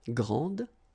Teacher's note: don't insist on the final E, but then pronounce this D